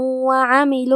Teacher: کلمت وعملوا میں یہاں حرف العین ہے، اس کی ادائیگی حلق کے درمیان والے حصے سے ہے